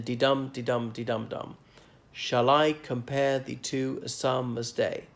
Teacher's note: syllables being stressed unstressed stressed unstressed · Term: metrical feet